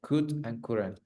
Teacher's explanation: The L is not pronounced.